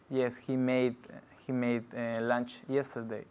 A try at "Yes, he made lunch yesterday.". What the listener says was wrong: Yeah, but es que no escucho la D. Yes, he made.